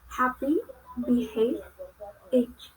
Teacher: Next is English consonant h. It belongs to glottal and fricative.